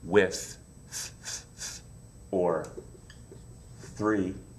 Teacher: Some words have a TH sound that's unvoiced, like with, or three.